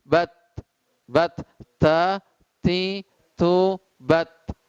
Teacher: Itu ujung lidah ditempelkan ke gusi gigi seri atas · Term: huruf ta